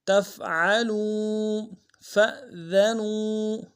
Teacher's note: تا کو فا کے ساتھ ملانا ہے، عین کو گہرائی سے ادا کریں گے، لام کو واو کے ساتھ ملانا ہے، واو مدہ ایک مقدار میں کھینچیں گے۔